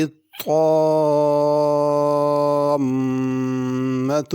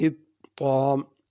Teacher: طامہ اس میں مد بھی کرنی ہے، میم پہ غنہ بھی کرنا ہے